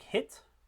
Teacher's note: So it has a constant quality throughout the duration. And this contrasts with diphthongs, which in a word like height has a different quality at the beginning and end of the vowel. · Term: monophthongs